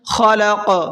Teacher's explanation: ربک الذی، را کو پر کر کے پڑھیں گے، خلق، خا کو پر کر کے پڑھیں گے، اور قاف کو پر کر کے بھی پڑھنا ہے، اور ساتھ ساتھ قاف کے اندر قلقلہ بھی کرنا ہے، کیونکہ جب یہاں پر آیت ہوگی تو قاف پر جزم لگ جائے گا، اور قاف پر جب جزم ہوتا ہے تو اس کے اندر قلقلہ کرتے ہیں، ہلکا سا آواز کو ڈبل کرتے ہیں